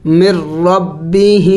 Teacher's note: ساکن کے بعد مشدد آیا ہوا ہے تو ساکن والے حرف کو نہیں پڑھیں گے